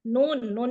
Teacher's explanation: Nun itu benar-benar ujung lidah ketemu ke gusi atas bagian depan ya di belakang gigi seri kita